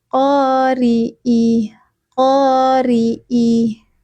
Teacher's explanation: Huruf ro kasrah dibaca tipis. Qori. Jadi bukan qori tetapi dibaca tipis.